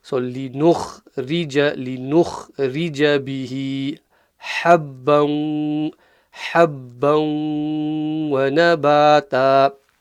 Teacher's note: the ra here is empty mouth because it has a kasra underneath it.